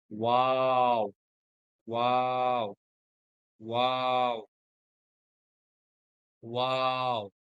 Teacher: এটা চার আলিফেই বলতে, টেনেই বলতে হবে